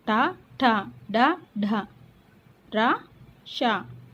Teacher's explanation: మూర్ధన్యము అంటే అంగిలి అనే అర్థము. అంటే మనం పలికేటప్పుడు నాలుక చివర అంగిలికి టచ్ అవుతుంది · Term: మూర్ధన్యాలు